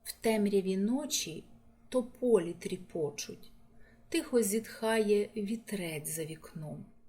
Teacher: у цьому фрагменті є асонанс голосних звуків і та о